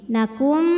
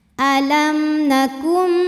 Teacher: ada nun sukun yang menghadapi huruf Mim maka bunyi Nun masuk ke mim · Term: idgham bhunah